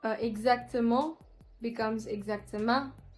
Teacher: the elongation of the last syllable as well as the conversion of on vowel to un